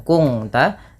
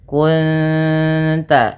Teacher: menyamarkan bunyi suara nun kepada ta dan ditahan bunyi dengungannya dua harakat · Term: ikhfa hakiki